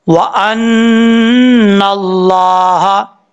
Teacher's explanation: ان القوت، حمزہ نون زبر ان، نون لام زبر نل، قاف واو پیش قو، واو زبر وا، قوا تا زبر تا. ان القوت، نون کے اوپر شد ہے، غنہ کریں گے ایک الف کی مقدار